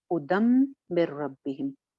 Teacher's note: नून की आवाज खत्म हो गई, क्यों क्योंकि आगे रो आ गया यरमलून में से